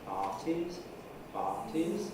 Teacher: But the fall isn't in the nuclear syllable, it's before. And if we were to take the nuclear pattern out and listen on its own, we'd just have a rise